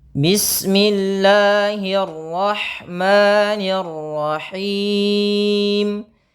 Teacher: huruf ro ini wajib ditebalkan